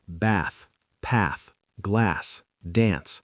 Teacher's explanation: In American English, these words use a short front A sound.